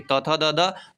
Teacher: त थ द दांत से होता है